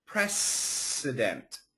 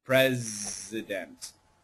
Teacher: So remember, when we make the S sound, there's no vibration. It's very clear, precedent. And when we make the Z sound, there's vibration in your throat, president.